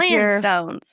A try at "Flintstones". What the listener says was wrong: You can't say your T's. Utahns never say T's.